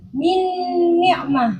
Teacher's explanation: Nah, kalau itu idgham kamil, makhraj dan sifatnya nun itu kan masuk secara keseluruhan kepada huruf yang kedua. Makhrajnya nun itu kan di ujung lidah.